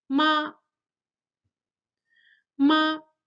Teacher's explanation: The second tone rises gradually just as when asking questions · the first tone it's high, it's flat and it lasts a little bit longer than the other three tones